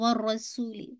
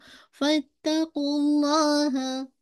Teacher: लाम नहीं पढ़ा जा रहा है